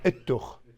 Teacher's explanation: So what happens in some dialects of Chaldean is the tau sort of drinks up the lemeth. You don't really pronounce it as much.